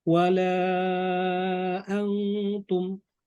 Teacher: nun mati ketemu ta didengungkan, dibaca sama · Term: Ikhfa hakiki